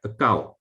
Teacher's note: Of course, it should be with ngata and augamye. But especially in lower Myanmar, Mon state, people don't nasalize this, but they pronounce it like akau. The augamye is still kept by some people.